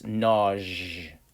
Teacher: where i'm from that s has more of a a z j ish sound